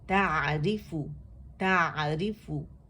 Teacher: تا باریک ہے، آئین بھی باریک ہے، اور اس میں توسط ہے